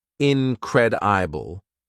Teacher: In pronunciation, it has 4 syllables, incredible, and the second syllable is stressed.